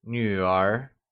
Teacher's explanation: it is pronounced using the falling rising tone can you try and say you are